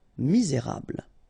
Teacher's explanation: don't insist on the final E here. You get this bl sound at the end.